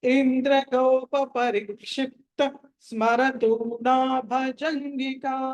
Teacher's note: మీరు క్షిప్త దగ్గర బ్రేక్ తీసుకున్న తని దీర్ఘం పడకూడదు